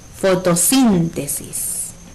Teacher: La sílaba que suena más fuerte es sin. Si nos fijamos, esta sílaba tiene tilde gráfica. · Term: sílaba tónica